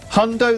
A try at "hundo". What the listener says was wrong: Can you say hundo like in a celebratory way? No, like in a like happy, like a cheer, like a football cheer.